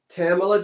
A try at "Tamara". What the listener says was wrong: Tamara, not Tamala. Tamara. Tamara. Like camera. Tamara.